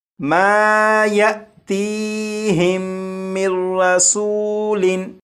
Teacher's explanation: इस नून साकिन को रा में इदगाम कर देंगे और यहाँ पर ये जो मीम है, मीम को रा से मिलाएंगे और ये पढ़ा जाएगा मिर मिर मिर।